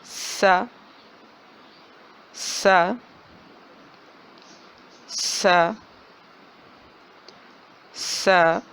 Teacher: زبان کی نوک جب نیچے والے دو دانتوں کے کنارے سے ٹکرانے کے ساتھ ساتھ اوپر والے دو دانتوں سے بھی لگے تو سین کی ادائیگی ہوتی ہے، اور اس کی صفت یہ ہے کہ اس کی آواز سیدھی ہوتی ہے، باریک ہوتی ہے اور سیٹی والی ہوتی ہے۔